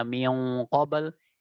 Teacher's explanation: Kalau untuk huruf qaf maka dengan tebal gunanya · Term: ikhfa ab'ad